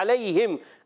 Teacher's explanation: عین ادا ہوتا ہے حلق کے درمیان والے حصے سے